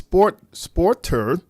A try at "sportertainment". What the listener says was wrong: Sporter. One word. Sportertainment. You were pronouncing the first T twice. You said sport. You said sportertainment. You was pronouncing one T twice.